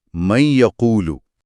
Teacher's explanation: نون کو یہ میں ضم کر دیتے ہیں اور آواز بنتی ہے من یقولو۔ آپ محسوس کریں گے کہ یہ پر زور دیتے ہوئے ناک میں ایک گونج پیدا ہو رہی ہے۔ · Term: ادغام